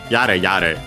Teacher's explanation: accented on the first ya, and the first mora